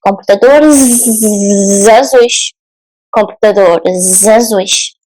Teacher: the S sounds like Z because it's between vowels.